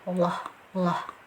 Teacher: Jadi jika berada di awal susunan kalimat, di awal kalimat, dia sudah otomatis masuk ke dalam tafkhim tebal ya. Jadi harus tebal bunyinya Allah, Allah.